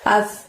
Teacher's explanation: Pada saat melafadzkan asqolaha, asnya ujung lidah kamu dorong ke gigi atas. As gitu ya, tipis, bukan as, bukan ash, tapi as, dorong ke gigi atas.